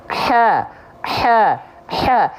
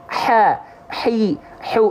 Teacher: Otomatis teman-teman gak perlu difikirkan apakah dia berbisik atau tidak. Kalau melafalkannya tepat dari tengah tenggorokan, H kecil dengan otomatis natural akan mengeluarkan sifat berbisik.